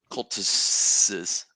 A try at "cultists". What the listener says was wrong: You got to enunciate those S's more.